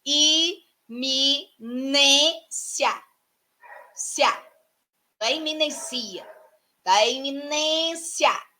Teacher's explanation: Então, a penúltima sílaba é a mais forte. Logo, é uma paroxítona.